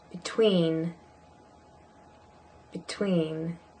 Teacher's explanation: You'll notice the E, the first E in between is a schwa